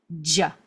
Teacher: It's a pop, J, and I'm using my voice.